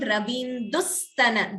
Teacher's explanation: Extra s is being heard, more stress on sa. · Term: Dvitvam